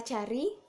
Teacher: huruf A rendah, di depan, dan tidak bulat